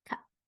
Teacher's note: add that little burst um on the ending sounds